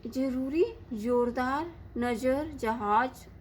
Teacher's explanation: दूसरा जो, यह उर्दू भाषा का वर्ण है, इसका उच्चारण हिंदी के वर्ण ज से अलग है। यह ज को बोलते समय जीभ ऊपर वाले दांतों से थोड़ा ऊपर हल्का सा छूती है और हल्की सी सीटी सुनाई देती है